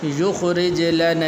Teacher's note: را کے نیچے زیر ہے تو اس لیے آپ نے اس کو موٹا نہیں پڑھنا بلکہ اس کو باریک کر کے پڑھنا ہے